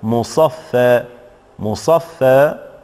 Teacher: مصفى الألف فيها يقرأ وقفا بالمد الطبيعي، ثم هذا الألف يقرأ بالتقليل بالإمالة الصغرى